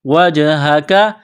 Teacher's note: جیم ساکن ہے جیم پر قلقلہ کریں گے. کاف کو باریک کرنا ہے.